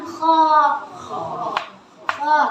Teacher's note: Dia keluar dari tenggorokan bagian atas, ya. Tenggorokan bagian atas, tebal. Tapi hati-hati, jangan mentang-mentang bunyinya ya, jangan mentang-mentang bunyinya kemudian mulut kita majukan jangan.